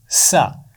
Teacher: زبان کی نوک اور نیچے والے دانتوں کے سرے سے لگا کر ہم اس کی آواز ادا کرتے ہیں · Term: سین کا مخرج